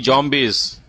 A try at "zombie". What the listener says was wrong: it's not zombie, brother. Zombie. It's Z. Zombie.